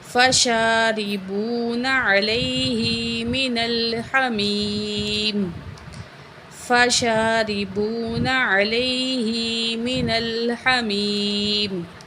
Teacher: شین کو کھڑے الف کے برابر کھینچ کے پڑھیں گے